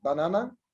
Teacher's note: So we make a kind of stress on the second syllable in the word banana. So the first ba is unstressed, na is stressed, na, the third syllable is unstressed.